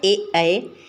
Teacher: ए इसमें कंठ और तालू दोनों का प्रयोग होता है